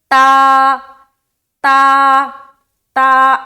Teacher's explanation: और ता को हम क्या पढ़ते हैं, बारीक पढ़ते हैं, है ना। ता को हम किस तरह अदा करते हैं, बारीक, यानी कि लाइट होता है, लाइट हम अदा करते हैं इसे।